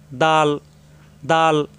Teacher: দাল, জিহ্বার আগা উপরে 2 দাঁতের গোড়ায় লাগবে,